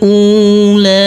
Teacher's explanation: Huruf alifnya kita baca pendek. Huruf lam di sini kita baca kurang lebih 4 sampai 5 harokat